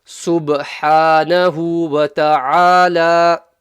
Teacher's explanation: There's a qalqala there. The ba has a sukoon and the ba is a qalqala letter, so you bounce it.